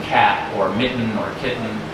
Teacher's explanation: A glottal stop is how in many T's are pronounced, like in cat or mitten or kitten. And somebody points out that that is a distinct part of the American accent as opposed to English.